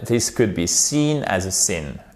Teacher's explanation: j'insiste vraiment trop sur la longueur de sin, qui est le i long, mais si on le fait de manière plus naturelle, this could be seen as a sin.